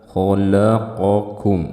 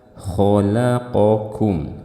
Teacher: kho-nya dibaca tebal, lamnya dibaca tipis, qaf dibaca tebal. Nah, banyak kesalahan saat membaca lamnya ikut tebal.